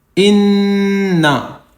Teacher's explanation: نون پہ تشدید ہے، یہاں گننا کریں گے، ناک میں آواز نکالیں گے تھوڑی دیر، ایک الف کی مقدار